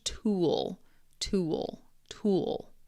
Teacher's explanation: It's got that dark L sound.